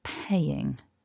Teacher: take care to stress the first syllable. So pay is stronger than ing, paying. And then our third person, even though it's written with an S, because pay ends in a vowel, which is voiced, the S is realised as a voiced Z sound.